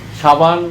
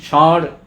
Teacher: আমরা একক স বেশিরভাগ, সে বানান দন্তস্ব হোক মূর্ধন্যস্ব হোক, আমরা তালব্য স উচ্চারণ করি একক। সাবান দন্তস্ব আকার দিয়ে তালব্য স উচ্চারণ করছি, ষাঁড় মূর্ধন্যস্ব আকার দিয়ে আমরা তালব্য স উচ্চারণ করছি, তালব্য স উচ্চারণ করছি।